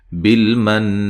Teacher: میم ساکن کا اخفا ہے، بالمن نون مشدد پہ غنہ ضروری ہے